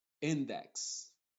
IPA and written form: ˈɪndɛks (Index)